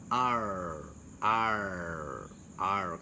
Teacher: lidahnya adalah hampir menyentuh pangkal rahang atas. Berarti nggak nempel ya, tapi bukan di antara juga, hampir. Jadi ditekuk ke atas ya. R. Kalau dalam bahasa Arab mungkin ini ro tebal ya, tartiq ya. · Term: sound R